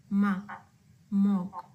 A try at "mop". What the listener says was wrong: So I think on the not the mo, but mock, I think you can work on that second sound in lesson number 8.